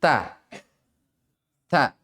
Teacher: sedikit ada bunyi desis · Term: Hames